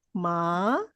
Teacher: Yes, from lower tone to high tone. Tapi dia bukan macam terus ma, itu bukan. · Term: Second tone